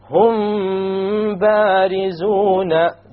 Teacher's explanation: when the meme is followed by a ba, you perform a ghunna, and that is called ikhfaa shafawi.